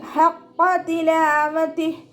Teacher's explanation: ഖാഫ് ഇസ്തിഅലാൻ്റെ ലെറ്ററാണ്, ഉയർത്തിയിട്ട് ഉച്ചരിക്കുക കേട്ടോ. ഖ എന്നുള്ള സൗണ്ട് തന്നെ കൊടുക്കുക.